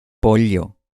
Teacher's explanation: El sonido tradicional de la doble L es una consonante lateral palatal, o sea, como una L, pero con la lengua pegada al paladar duro. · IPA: [ʎ]